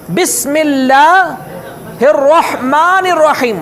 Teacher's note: رحمان کے اندر جو ہا ہے وہ حلق کے دوسرے پوائنٹ سے نکلنے والا، یہاں سے نکلنے والا.